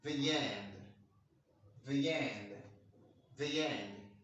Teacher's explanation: In vowel and vowel linking, when the word when the word ended with the vowel E, and you want to link it with another vowel, so there's going to be a ghost sound there, a ghost sound, and that ghost sound is going to be yeah.